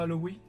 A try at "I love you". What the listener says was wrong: C'est un W, I love you. I love you. I love you.